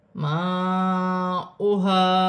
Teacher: الف مدہ بھی بن رہا ہے اور بڑی مد بھی ہے، مد متصل، 5 الف کی مقدار کھینچ کر پڑھا جائے گا۔ · ہا حرف حلقی میں سے ہے، حلق سے ادا کیا جائے گا